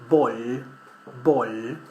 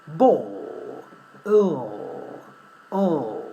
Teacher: we do a strange movement with our tongue that is curling up